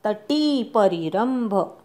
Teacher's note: तटी परिरंभ टी दीर्घ म्हणायचा. री ऱ्हस्व म्हणायचा.